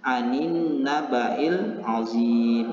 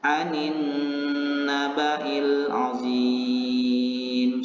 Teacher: membaca huruf nun yang bertasydid itu dengan cara menekan huruf nun yang bertasydid, kemudian menahan selama 2 harokat dan disertai dengan dengung.